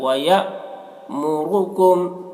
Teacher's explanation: یہاں حمزہ ساکنہ ہے، حمزہ ساکنہ کا پڑھنے میں جھٹکا لگے گا۔ وَيَأْمُرُكُمْ، را کو پر پڑھیں گے، را کے اوپر پیش ہے۔